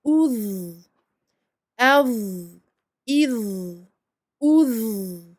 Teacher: Là, ça vibre également parce qu'on sort le bout de la langue également comme pour le zel, sauf qu'ici la lettre est emphatique, donc on gonfle tout ça, on enferme l'air à l'intérieur de la bouche, et ce qui provoque donc l'emphase de la lettre.